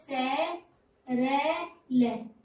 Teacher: स मसूड़े से दंतमूल से बोला जाता है। और रे और ले हम अंतस्थ व्यंजन में पढ़ चुके हैं, ये र में।